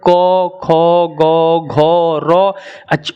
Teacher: अ आ क ख ग घ र, इन सब का उच्चारण स्थान हो जाएगा आपका कंठ